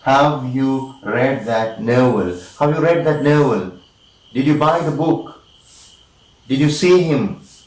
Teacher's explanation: are taking the rising tune and now yes sort of questions yes or no questions again the sound is going up from low position to the high position